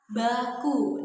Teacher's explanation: dia termasuk ke dalam bunyi bersuara karena pita suara kita itu bergetar ketika kita mengucapkan bunyi be